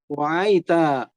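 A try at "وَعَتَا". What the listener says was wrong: Hanya pendek ya, wa'ata.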